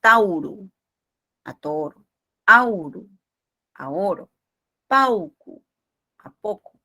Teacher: Algunos diptongos también de latín, el diptongo au cambió a la vocal o